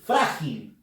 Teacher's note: la fuerza de voz está en la sílaba fra, que es la penúltima